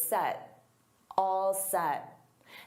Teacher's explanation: And notice I don't push out that T. So set. All set.